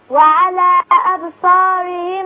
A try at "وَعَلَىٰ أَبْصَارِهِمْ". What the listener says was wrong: مدي شوية مش في علامة مد. وعلى أبصارهم